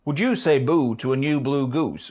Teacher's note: perhaps one of the strongest indicators is the absence of goose fronting